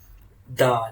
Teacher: dal makhraj is tongue tip touches gum line